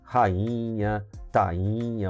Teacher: O NH vai nasalizar esse I